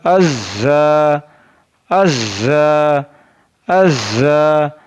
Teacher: Za is pronounced from the tip of the tongue and the inner edges of both teeth.